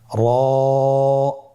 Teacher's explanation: জিহ্বার আগার উল্টা পিঠ তার বরাবর উপরে তালের সঙ্গে লাগিয়ে উচ্চারিত হয় · র হরফটি এখানে আমরা পর উচ্চারণ করব। মোটা করে উচ্চারণ করব। এবং র হরফটি এক আলিফ টেনে পড়ব।